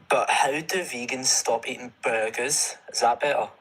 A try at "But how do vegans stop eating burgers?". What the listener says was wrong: You mean, is it better? There's T's there. Don't say better. It's not better. There's T's.